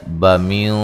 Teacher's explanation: یہاں نون ساکن کا موٹا اخفا ہے۔